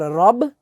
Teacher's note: را جو ہے اسے ہم پر کر کے پڑھیں گے، موٹا کر کے سے ہم پڑھیں گے، را کے اوپر زبر ہے اس لیے رب عین کھڑی زبر آ، عین اور حمزہ کے اندر فرق کرنا ہوگا۔